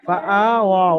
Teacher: হামজাকে একালিফ পরিমাণ আলিফ মাদ্দার মতো টান দিয়ে পড়তে হবে।